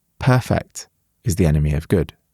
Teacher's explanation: When it's used as an adjective, just like in Voltaire's quote, it means completely flawless, and the first syllable is stressed.